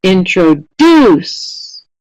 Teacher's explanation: It's the last syllable that is getting the most stress in this word.